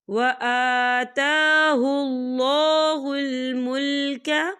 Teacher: آتا کھڑی حرکات ہے، تو ہم اسے 2 یا 3 حرکت کے برابر کھینچ کے پڑھیں گے